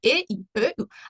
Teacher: unlar tilning oldidan chiqadi